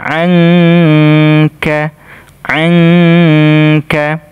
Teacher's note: nun sukun ketemu huruf Kaf dibaca ikhfa